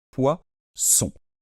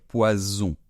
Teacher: dans ce s là c'est Z c'est ce qu' on appelle un S sonore Z on peut faire un peu comme la mouche et on